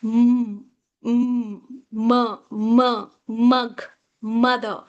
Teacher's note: when you pronounce these words, the air flows from the nostrils